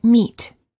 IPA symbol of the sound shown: i